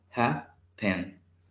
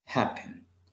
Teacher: Este verbo tiene dos sílabas, happen. Y el acento lo tiene al inicio.